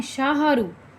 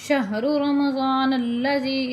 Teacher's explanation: شین ہا زبر شاہ، کچھ لوگ پڑھتے ہیں شاہرو، شاہرو نہیں پڑھنا، شہر رمضان الذی، اس طرح آپ نے پڑھنا ہے، شین کو ہا کے ساتھ ملا کے، ہا کے اوپر جو ہے زبر وہ نہیں آتی، وہ نہیں پڑھی جائے گی۔